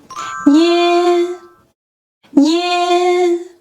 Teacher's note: The E pronunciation is brief, while the A part is more emphasized, louder, and sustained.